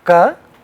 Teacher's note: So ka becomes a sound which has no vibration, no air. Kha is a sound which has only more air but no vibration.